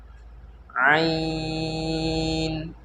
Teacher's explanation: عین بھی جو ہے حلق کے بیچ کے حصے سے ادا ہوتی ہے